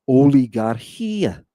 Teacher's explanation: There's no H sound on the front of it. There's no puff of air. It's not there. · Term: smooth breathing